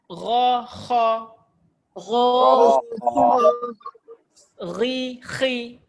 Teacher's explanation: kha dia masa dia bunyi angin dia keluar